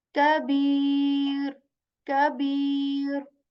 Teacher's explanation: Ka is simply articulated when the back part of our tongue it touches the soft as well as hard palate, and you say ka. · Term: Kaf letter